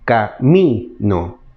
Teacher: Yo cargo la palabra en la sílaba mi, camino. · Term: acento tónico